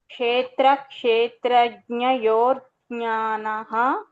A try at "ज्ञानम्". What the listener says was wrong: ज्ञानः नास्ति ज्ञानम् अनुस्वार अस्ति